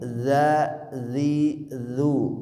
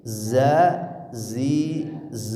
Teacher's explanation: Dza ujung lidah dengan ujung gigi seri atas. Kalau zai ini ke ujung lidah dengan gigi seri bawah.